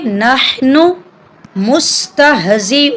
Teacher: यहाँ पर भी नून मुशद्दिद है, नून पर हम गुन्ना करेंगे। हा को हम हलक से अदा करेंगे, ये हरूफ हल्की है। अक्सर लोग नून को यहाँ पर लंबा कर देते हैं, नहनू पढ़ देते हैं।